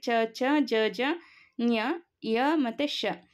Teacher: ನಾವು ದವಡೆಯ ಸಹಾಯದಿಂದ ತಾಲುವಿನ ಸಹಾಯದಿಂದ ಉಚ್ಚಾರ ಮಾಡುವುದರಿಂದ ಇದನ್ನ ನಾವು ತಾಲವ್ಯ ಅಕ್ಷರ ಅಂತ ಹೇಳ್ತಿವಿ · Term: ತಾಲವ್ಯಾಕ್ಷರ